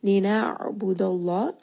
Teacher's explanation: Ayn here is going to be a letter of tawassut, meaning that when this letter has a sukun, you are going to hear it roll around in the throat. And because ayn is one of the letters from the middle of the throat, there's going to be a little bit of compression, a little bit of constriction around the middle throat.